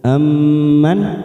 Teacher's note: Mim yang bertasdid bacaan gunnah, kita tekan 3 ketuk.